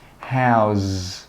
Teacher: that last sound should be like a z sound. Your throat should vibrate. How's. And then we don't say how's it.